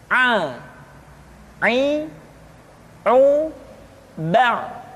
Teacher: dikeluarkan dari tengah-tengah tenggorokan seperti kita mengucapkan huruf H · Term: huruf Ain